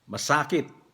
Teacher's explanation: ang long vowel niya sa second syllable